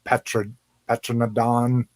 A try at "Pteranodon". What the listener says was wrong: Pteranodon, the P is silent.